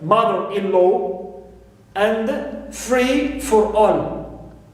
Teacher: i stress mother in mother-in-law and free in free for all